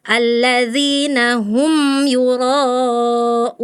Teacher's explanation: Mim sukun juga jangan disaktah Kakak ya. Harus dialirkan, sedikit ngalir. Kalau mim sedikit ngalir, tawasud.